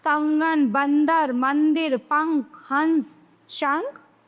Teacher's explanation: अनुस्वार सेमी नस्ल, वर्णों के ऊपर लगने वाले बिंदु को हम अनुस्वार कहते हैं और अनुस्वार वाले वर्णों के उच्चारण में हवा नाक से बाहर निकलती है